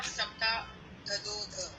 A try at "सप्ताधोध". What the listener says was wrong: धदो नहीं है, सप्ताधोध। धोध। ये जो एस जैसा बन रहा है इसका प्रोनाउंसिएशन नहीं करते, वो आ होता है लेकिन प्रोनाउंसिएशन नहीं करते, सप्ताधोध।